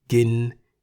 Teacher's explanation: gin in the middle tone meaning to eat